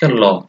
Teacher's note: ল উচ্চারণের ক্ষেত্রে জিহ্বা ডগা দাঁতে স্পর্শ করে এবং জিহ্বার দুই পাশ দিয়ে বাতাস বের হয়, এই জন্য এগুলোকে বলা হয় পার্শ্বিক ধ্বনি।